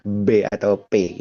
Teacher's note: diucapkannya ya tidak lain dan tidak bukan ya dengan mengetupkan dua bibir, saling mengaturkan dua belah bibir seperti itu dan kuat memang sifatnya.